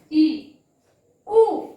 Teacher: ई में जीभ कहाँ गई? आगे आ गई। यानी जीभ के आगे भाग से।